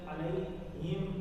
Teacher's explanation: جہاں جہاں زیر ہے نا وہاں وہ ای والی ساؤنڈ ہے اے والی نہیں